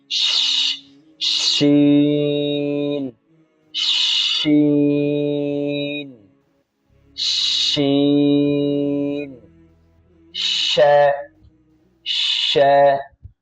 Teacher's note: শিন হরফটি জিহ্বার মধ্যখান থেকে তালুতে লাগিয়ে উচ্চারণ হয়। শিনের মধ্যে যে বিষয়গুলো লক্ষণীয় সেটি হলো যে আওয়াজ চালু হবে, প্রথমে আওয়াজ চালু হবে, বাতাস চালু হবে।